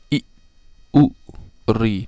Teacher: अ इ उ ऋ में एक मात्रा का समय लगता है। इसीलिए इसे ह्रस्व स्वर कहते हैं।